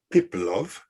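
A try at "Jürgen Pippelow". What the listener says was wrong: W at the end, you say Piplo. That's the Russian version.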